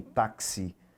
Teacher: Você vai ter 4 letras, mas o X ele tem som de KS. Você vai ouvir o som do K, vai ouvir o som do S aqui também, táxi, ok? Então aqui você tem um dífono.